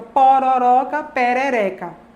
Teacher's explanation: O segundo ró, pororoca, o terceiro O, por exemplo, que é o tônico, é uma vogal que é média baixa, e aqui na nossa região a gente pronuncia esses Os pretônicos também como médios baixos